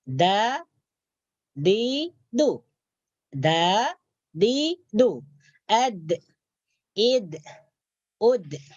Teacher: huruf dal juga keluar daripada hujung lidah menyentuh gigi atas. Menyentuh pangkal gigi bagian atas.